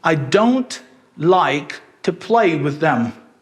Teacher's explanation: E eu não falo with e them, porque with termina com esse som de TH e them começa com som de TH. Então esses sons vão se juntar e a gente fala eles só uma vez.